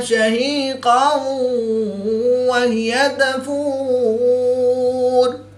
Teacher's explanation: دو زبر کی تنوین کے بعد واو حروف یرملون میں سے ہے تو یہاں پر ادغام مع الغنہ ہوگا یعنی غنہ کر کے پڑھیں گے